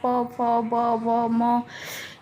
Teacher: तो ओठों के स्पर्श से बने वर्ण जैसे प वर्ग हो गया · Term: ओष्ठ वर्ण